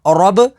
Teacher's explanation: را با زبر رب را کے اوپر زبر ہے تو را کو پر یعنی موٹا پڑھیں گے. با کے اوپر تشدید ہے تو تشدید والے حرف کو 2 دفعہ پڑھیں گے.